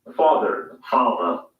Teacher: that the final r sound is not pronounced in british english the father ends in a simple schwa vowel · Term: non-rhodic